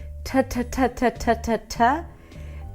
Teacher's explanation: it's just the tip of the tongue touching the upper palate